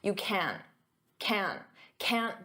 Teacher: In spoken English, I'm not going to pronounce that hard can't with the t.